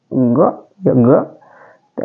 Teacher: Ga di sini adalah halki, keluar di ujung tenggorokan kita. Ga. Dia sukun berarti ag.